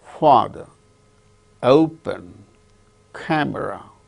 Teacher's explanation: In the case of all these three words, the first syllable is stressed